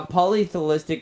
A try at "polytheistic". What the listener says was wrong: There's no L in polytheistic. You're saying like all for some reason.